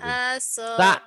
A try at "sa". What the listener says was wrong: Bukan za, ini sa, jangan ditukar-tukar.